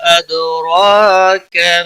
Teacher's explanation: وما مد منفصل ہے، 3 الف کے برابر کھینچ کر پڑھیں گے، دال ساکن پر قلقلہ ہوگا، اور را کھڑی زبر کی وجہ سے موٹا پڑا جائے گا، کا کو کھینچنا نہیں۔